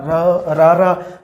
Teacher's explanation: ਰਾਰਾ ਜਦੋਂ ਆਪਾਂ ਬੋਲਦੇ ਹਾਂ ਤਾਂ ਸਾਡੀ ਜਿਹੜੀ ਜੀਭ ਆ ਉਹ ਕੰਬਦੀ ਹੈ, ਇਸ ਕਰਕੇ ਇਹਦਾ ਨਾਮ ਦਿੱਤਾ ਜਾਂਦਾ ਹੈ ਕਾਂਬਵਾਂ ਵਿਅੰਜਨ।